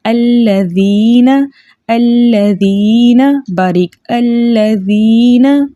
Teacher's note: یا ساکن سے پہلے زیر ہے اس لیے اس یا کو 2 حرکت کی مقدار ہم کھینچ کر پڑھیں گے کیونکہ یہ یا مدہ ہے. ٹھیک ہے، ذال کو ذال کے مخرج سے پڑھیں گے، زا نہیں پڑھیں گے، الذین نہیں پڑھیں گے.